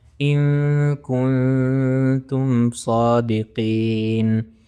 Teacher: ان کنتم صادقین، دونوں کیسز میں اخفا ہو رہا ہے۔ پہلے نون ساکن کے بعد کاف ہے، دوسرے نون ساکن کے بعد تا ہے، تو اخفا ہو رہا ہے